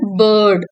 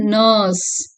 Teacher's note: The lips are unrounded and the vowel sound is sustained, making it more prominent. கொஞ்சம் நேரம் இழுத்து சொல்றதுனால sustained sound அப்படின்னு சொல்றோம். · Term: சென்ட்ரல், மிட், லாங், அன்ரவுண்டட் வவல்